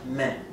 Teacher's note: C'est linéaire, c'est tout droit. Il n'y a pas de montée ou de descente de ton.